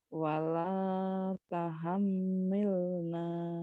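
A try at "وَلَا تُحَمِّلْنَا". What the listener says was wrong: Taha, bukan taha, tapi tu.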